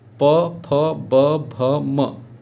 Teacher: प बोलने में देखिए अपने आप बिना आप होंठ सटाए आपस में प नहीं बोल सकते हैं। तो प फ ब भ म, ये जो है ओंठ से होता है उच्चारण।